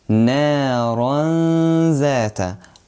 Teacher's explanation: So the way to pronounce Ikhfa is, if there is any letter other than the letters of Idh-har, Idgham or Iqlab comes after Noon Sakinah or Tanween, we need to hide the Noon Sakinah. We will hide the Noon Sakinah and the Tanween, and we will add 2 beats of Ghunnah.